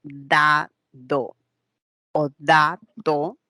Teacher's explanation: el diente inferior cuando son pronunciamos el sonido dado o dado es la puntita de la lengua la que se aproxima a la parte interna de los dientes · es la puntita de la lengua la que se aproxima a la parte interna de los dientes. Y ahí podemos tener entonces los sonidos D y T dentales.